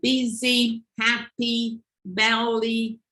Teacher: Okay, this outcome, the happy tense, is the way the E, like busy, happy, belly, the E became more tense in terms of its articulation